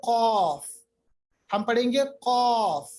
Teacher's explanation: कौफ पढ़ते वक्त मोटी आवाज आती है और होंठ गोल होते हैं · जो जबान की जड़ होती है यानी अक्सर लिसान होता है, उसको हमें सॉफ्ट पार्ट की तरफ, ऊपर की तरफ या सॉफ्ट प्लेट की तरफ ले जाना पड़ेगा और होंठों को गोल करेंगे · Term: कौफ का मखरज